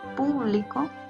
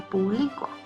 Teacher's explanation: Ahora, si ustedes se fijan, la palabra público es la misma, pero hay público y hay público. En una la fuerza de voz está en la sílaba pu y en la otra está en la sílaba bli.